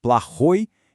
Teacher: A sílaba tônica tá no final playoi. Então a terminação vira oi.